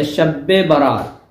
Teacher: با ڈبل کہہ دیا، مشدد تشدید کے ساتھ کہہ دیا